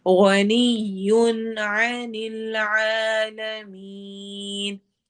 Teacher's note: गनियुन में नून की आवाज को हम वाज़िह करेंगे